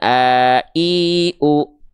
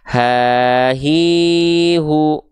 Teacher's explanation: Kalau hamzah itu pita suaranya menutup, sehingga dia hamzah nggak keluar nafas kan, a i u gitu ya. Sedangkan H besar itu pita suaranya membuka, ya, pita suaranya membuka sehingga dia keluar nafas, ha hi hu. Bisa diikuti?